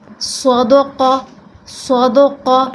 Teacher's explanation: صاد یہ حروف مستعلیہ میں سے ہے اس لیے اس کو پر کرنا ہے، قاف یہ بھی حروف مستعلیہ میں سے ہے اس کو آپ نے پر کرنا ہے۔